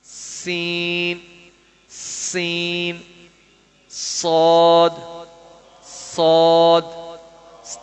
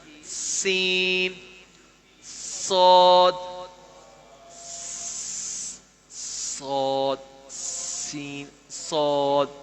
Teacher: زبان کی نوک سامنے اوپر نیچے دو دانتوں کے اندرونی کنارے سے ادا ہوتے ہیں.